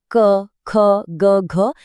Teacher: क वर्ग की सारी आवाजें क, ख, ग, घ ये सब गले से आती हैं